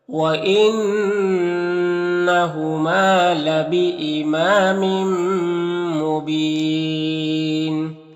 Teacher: یہاں پر تنوین کے بعد میم ہے تو میم کو میم سے ملا کر غنہ کے ساتھ پڑھیں گے، اس کو ادغام شفوی کہتے ہیں۔